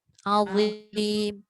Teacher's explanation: Bila hujung lidah keluar dia tak ada desiran.